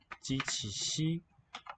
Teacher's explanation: Tongue tip is at the palate. We call these palatal.